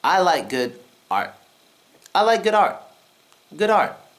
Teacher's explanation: with the silent T sound what you want to do is stop the air from coming out you want to temporarily stop breathing for example listen carefully and